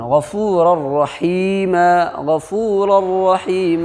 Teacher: دو پیش کی تنوین کے بعد را آ رہی ہے تو لام اور را کی صورت میں بغیر گنہ کے ملا کر کے پڑھیں گے اور یہ تنوین کی آواز چلی جائے گی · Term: ادغام بلا گنہ